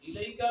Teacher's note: الیکا میں یا لین کا قاعدہ لگ رہا ہے، ٹھیک ہے، یا ساکن سے پہلے زبر آ رہا ہے، اسی لیے یہاں یا لین ہوگا اور اس کو بغیر کھینچے بغیر جھٹکے دیے نرمی سے پڑھیں